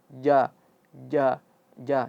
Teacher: ja ini dia makhrajnya itu berada di tengah lidah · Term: huruf ja